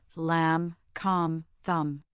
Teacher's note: Your lips come together for the M, but you do not release the B sound. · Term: silent